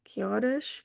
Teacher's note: Horas, no H, why? It's not pronounced in Portuguese.